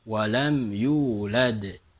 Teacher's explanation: walam yulad berada di akhir maka itu adalah qolqolah kubro